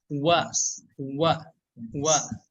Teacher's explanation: cara membaca huruf waw ini yaitu memonyongkan dan menarik ya